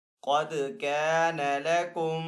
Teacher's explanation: دال حروف قلقلہ میں سے ہے تو دال کے اوپر قلقلہ کریں گے۔ قَدْ كَانَ لَكُمْ آیَةٌ فِی فِئَتَیْنِ، حمزہ کے اوپر یہاں پہ کھڑا زبر ہے تو حمزہ کو ایک الف دو حرکات کے برابر کھینچ کر ادا کریں گے۔